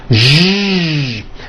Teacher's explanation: To produce this sound, first make a sh sound, and then you add voicing. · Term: voiced SH sound